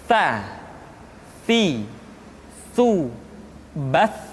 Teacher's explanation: ujung lidah disentuhkan dengan dinding dua gigi seri bagian atas.